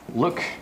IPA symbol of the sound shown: ʊ